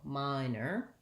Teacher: in the word minor the or says er and it has first syllable stress